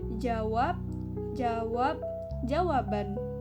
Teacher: bunyi tak lepas pada suku kata tertutup, namun berubah jadi beh jika diikuti vokal.